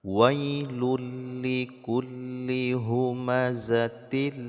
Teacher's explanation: memasukkan bunyi nun mati ataupun tanwin ke dalam huruf lam tanpa disertai dengan berdengung ya Jadi dimasukkan bunyi tanwinnya ke dalam lam sehingga tanwinnya tidak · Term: idgham bila ghunah